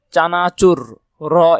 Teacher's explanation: এটা র করে উঠছে মানে জিহ্বা নড়ে উঠছে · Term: কম্পিত